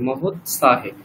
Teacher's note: এটা ত হচ্ছে, তয় হলন্ত আছে, ঠিক আছে? তকার পুরোটা বললে চলবে না।